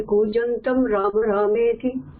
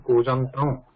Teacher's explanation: We should not write Ma and should not pronounce also Ma there. Should not close the lips. And it is Anuswara and writing also.